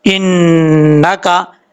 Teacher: حمزہ زیر نون، ان، نون زبر نا، ان، کاف زبر کا، ان کا، نون کے اوپر شد ہے، غنہ کریں گے ایک الف کی مقدار۔